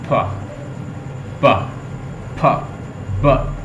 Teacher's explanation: उसके बाद stop, a closures of the lips momentarily seal off escapes of the airs in the mouth of the pharynx in outside the atmosphere, causing a short-term rise in air pressures in the vocal tracts. As the lips open again, the compressed air is released through them with a small audible explosion. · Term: स्टॉप साउंड